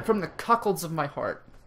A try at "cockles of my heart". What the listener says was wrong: The cuckolds? No, it's cockles. No, you said cockled. Said cuckold.